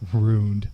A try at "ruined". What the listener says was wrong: Why are you putting so much emphasis on the R?